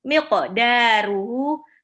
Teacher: hu-nya di sini mad silah tawilah dibaca 4 harokat, ya 2, ini mirip seperti mad jaiz munfasil, bisa dibaca 2, 4 atau 6, tapi diutamakan 4 saja. · qafnya di sini qalqalah harus pantul ke qa